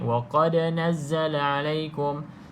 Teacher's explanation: pastikan lantun ya tuan-tuan dan puan, lantunkan pada huruf dal ni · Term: lantunan